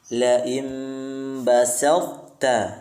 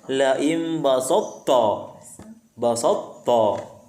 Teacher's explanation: Setelah diangkat pangkal lidahnya untuk menyebutkan to, setelah itu baru kita turunkan lidahnya untuk menyebutkan huruf ta. Jangan naik terus.